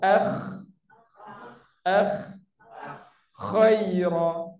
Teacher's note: Kalau kita sebut huruf ghin dengan huruf kha, kita akan ada bunyi sikit air liur